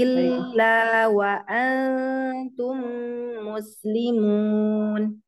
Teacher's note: illa, panjangkan dua dulu laknya.